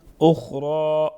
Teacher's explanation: خا اور را دونوں کو پر پڑھیں گے، کڑی حرکت ایک الف کے برابر پڑھا جائے گا